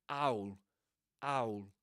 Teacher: This is called glottal reinforcement because it's pronounced you know there's a there's a sound here called glottal stop being pronounced at the beginning of owl